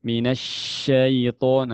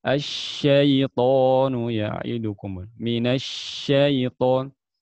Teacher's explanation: Penyebaran suara syin dari makhraj hingga berbenturan dengan sisi bagian dalam gigi atas dan dari bawah. Intinya menyebarnya suara itu tafasyi.